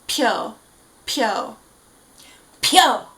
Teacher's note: we have that very aspirated P